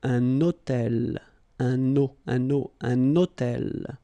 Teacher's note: I'm making this little liaison, this little link between the two.